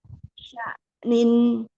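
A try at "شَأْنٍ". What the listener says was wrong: Jadi sya'nya harus kasih syiddah dulu, Bu. Jangan buru-buru ke nun. Sya'an.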